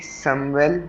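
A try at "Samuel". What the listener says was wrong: जामुएल, एस के आगे वो है वोकाल है, तो उसका साउंड बन जाएगा जे, जे, है ना। जामुएल, जामुएल, जामुएल, है ना। जामुएल।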